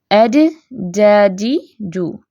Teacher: 2 حصے آپس میں ٹکرا کے سختی کے ساتھ مل کے الگ ہوتے ہیں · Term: جیم